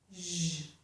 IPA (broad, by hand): ʒ